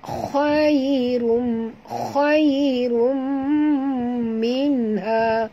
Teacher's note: Tanwin baris 2 depan bertemu dengan mim, idgham ma'al gunnah ya